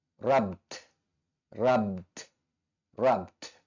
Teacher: akhiran ed di belakangnya akan dilafalkan berupa letupan huruf D. Sehingga bentuk kedua dari rub dan bentuk ketiganya akan kita baca rubbed, rubbed, rubbed.